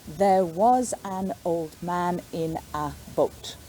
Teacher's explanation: those unstressed words are said very quickly and pushed together